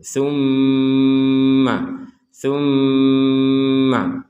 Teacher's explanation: ada seorang mim dengan tashdid; Kita harus mengucapkannya dengan bunyi sengau, kita membacanya dengan suara sengau. · Di sini ada mim bertasydid, kita dengungkan, kita baca dengan dengung.